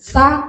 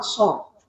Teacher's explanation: Sa sama so. Kalau sa istifal, sin istifal, so itu isti'la naik. Kalau isti'la so tidak pakai isti'la itu nanti jadinya sin.